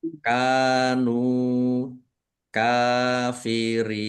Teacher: Ditahan biar tampak mendengung. Mim sukun bertemu dengan huruf kaf. Izhar syafawi dibaca jelas. · Kaf fathah alif mad thobi'i. Nun dumah wawu sukun. Mad thobi'i. Kaf fathah berdiri. Mad thobi'i. Masing-masing dibaca panjang dua harakat.